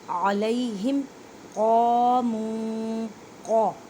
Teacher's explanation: قوف کو ادا کرتے وقت خیال رکھیں کہ کاف کی آواز نہ آئے اور یہ حروف مستعلیہ میں موٹے حروف میں سے ہے, ایک الف کی مقدار میں کھینچ کر پڑھیں.